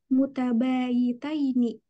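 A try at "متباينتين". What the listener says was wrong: Mutabayinataini ya kurang alif nun. Mutabayinataini. Yinataini.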